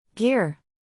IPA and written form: ɡɪr (Gear)